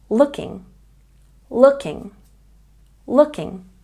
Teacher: looking has a stress on the first syllable